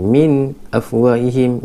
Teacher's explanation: huruf izhar halqi min afwahihim jelas tanpa dengung